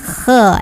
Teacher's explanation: Berbeda dengan huruf ha, ini ada kotornya. Jadi kayak ngorok tapi nggak berlebihan ya. Kha, naik pangkal lidahnya. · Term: huruf kha